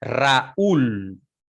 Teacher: la mayor energía articulatoria o acento de voz está en la vocal cerrada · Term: hiato